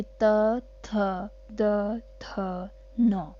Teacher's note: दंत यानी कि दांत। ठीक है, जब हमारी जीभ हमारे दांत में टच होगी तो वो दंत के कहलाएंगे सारे के सारे